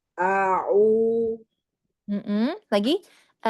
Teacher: huruf ainnya hati-hati cenderung masuk ke hidung ya. Jadi tidak ya, tapi dibuka rongganya